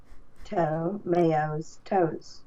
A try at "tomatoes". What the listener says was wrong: No mayo, just May, the month. Toe, May, and then toes. Toes plural. May, toes.